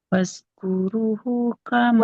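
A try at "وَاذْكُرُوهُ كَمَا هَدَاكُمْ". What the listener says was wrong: Waz. Bukan fa, waz.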